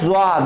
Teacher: ज़्वा को भी हम लाइटली टच करते हैं और लाइटली वाइब्रेट करने की कोशिश करते हैं